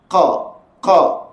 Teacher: sifatnya dinamakan sifat syiddah suara tertahan